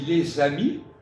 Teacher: tu fais la liaison entre les et amis, et en plus tu ne prononces pas le S final